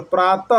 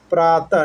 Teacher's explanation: विसर्ग, उच्चारण में कंठ से ह के समान होता है